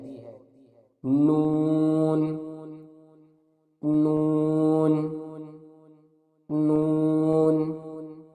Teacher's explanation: نون کے مخرج کی ادائیگی زبان کا کنارہ اور دانتوں کی جڑ کے اوپر تالو کی جانب والے حصے سے ہوتی ہے